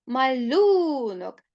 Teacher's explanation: наголос падає на другий склад тобто на звук у